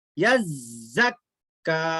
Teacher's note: जा की आवाज सख्ती से अदा होती, जाल की तरह ढीला ढीला अदा नहीं होती।